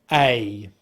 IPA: eɪ